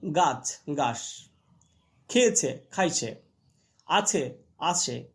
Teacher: এই সকারী ভবন মূলত পূর্ব বাংলার উচ্চারণে শোনা যায়